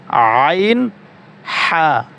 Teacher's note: হলকের মধ্যখান হইতে উচ্চারিত হয় আইন হা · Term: 2 নম্বর মাখরাজ